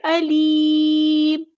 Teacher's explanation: میم کو ہم ساکن کر دیں گے وقف کرتے ہوئے